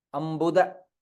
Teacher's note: ba is alpa prana it is not bhu